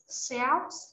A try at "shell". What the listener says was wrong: Shell. No S. Shell.